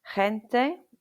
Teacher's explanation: before E or I, G is like a breathy English H, like the H sound at the end of the Scottish word loch